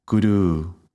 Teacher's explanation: the first U is half of the time of the second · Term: the second U is longer